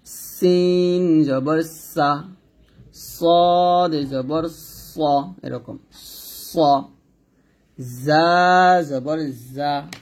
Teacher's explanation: তো সিন, সদ, যা এর মধ্যে সিন এবং সদ দুইটা বাতাস বের হয়। যা বাতাস বের হয় না। এবং সদ হবে মোটা। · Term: সফিরের হরফ